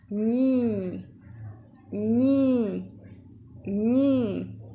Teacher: La lengua se va hacia atrás y se forma un cerrito. Y esa parte va a tocar nuestro paladar. Y el aire va a salir por nuestra nariz